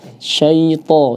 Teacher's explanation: Jadi cukup ditebalkan tidak sampai dimonyongkan.